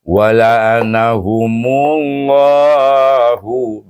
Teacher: dengan mensyamsikan mu itu kepada lam jalalah dan dibacakan tebal